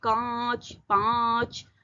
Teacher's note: नाक और मुंह दोनों से आवाज ए रही है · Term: अनुनासिक